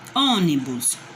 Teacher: Ônibus é o mais forte, o O é a mais forte.